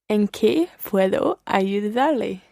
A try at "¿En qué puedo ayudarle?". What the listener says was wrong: Muy bien.